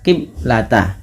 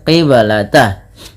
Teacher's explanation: ada bacaan qalqalah maka suara bnya harus dipantulkan. Kesalahan yang terjadi di dalam membaca bacaan qalqalah yaitu tidak memantulkan bunyi suara bnya.